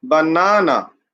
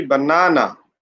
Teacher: you have to put pressure on the second syllable